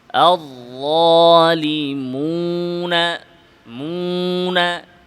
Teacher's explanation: মিম নাকে যাবে কিন্তু ওয়াও যেন নাকে না যায়